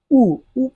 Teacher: ऊ पढ़ा तो यहाँ पे ओंठ गोल रहा है।